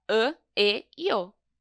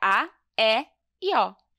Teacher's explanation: O circunflexo deixa essas letras com som fechado, fica "â, ê, ô".